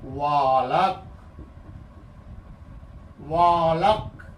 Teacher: क पर हल्का बल ज्यादा पड़ता है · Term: शब्दावलाघात